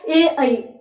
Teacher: अब ए ऐ यहां पर कंपन हो रहा है, गले में कंपन हो रहा है, तो कंठ की सहायता ए ऐ, हल्का तालु का सहयोग। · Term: कंठ तालव्य स्वर